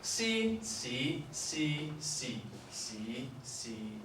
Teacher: We've got a high tone, C. We've got a high rising, which is C. We've got a mid-level, which is C. We've got a low falling, which is C. We've got a low rising, C. And a low, which is C. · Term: 6 tones in Cantonese